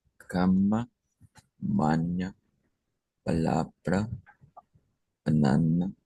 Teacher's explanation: palabras en portugués que tienen una a media, ¿verdad? A media centralizada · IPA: ɐ